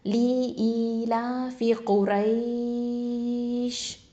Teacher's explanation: 2 இல்லைன்னா 4 ஹரக்கத்தை நீட்டி நிப்பாட்டலாம். அப்போது குரைஷ் அப்படின்னு சொல்லி நீட்டி நிப்பாட்டலாம். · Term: மத்துல் லீன்